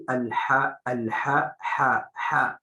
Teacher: Contohnya al-ha sering kurang menipiskan bacaan haknya.